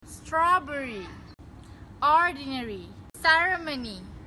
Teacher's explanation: the British people use the schwa and tend to drop the vowel